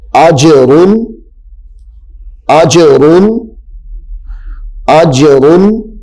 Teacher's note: حمزہ جیم زبر اج، جیم حروف قلقلہ ہے، ساکن بھی ہے، خوب ظاہر کرنا ہے۔ حمزہ جیم زبر اج، را دو پیش رن، اجرن، اجرن، اجرن۔